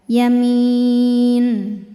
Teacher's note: Maka mimnya panjang, boleh 2 atau 4 atau 6 harokat asal konsisten dalam sekali baca. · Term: mad arid li sukun